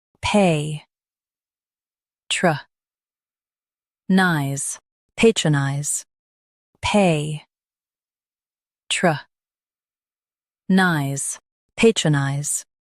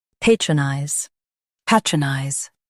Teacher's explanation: Stress pay and soften truh and nize.